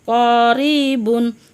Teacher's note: কফ জিহ্বার গোড়া থেকে মোটাভাবে আদায় হবে, নইলে কাফ অক্ষর আদায় হয়ে পড়া হারাম হয়ে যাবে।